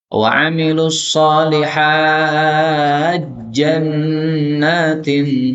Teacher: Maka taknya hilang menjadi jim. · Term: idgham